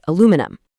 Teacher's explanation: But over in North America, the spelling is shorter and the stress completely shifts to make it aluminum